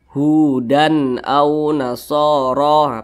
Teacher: tanwin berjumpa dengan Hamzah hukumnya adalah izhar halqi dibaca jelas tidak berdengung Nah jadi dibaca pendek saja Hudan au nasoro pendek saja seperti